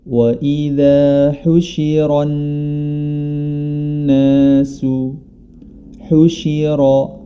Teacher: Pada awal ayat ke-6 di surah Al-Ahqaf yang bunyinya wa idza husyiran nasu, husyira, huruf ra dibaca tebal dikarenakan berharokat fathah, dan kemudian bertemu dengan huruf nun yang bertasydid.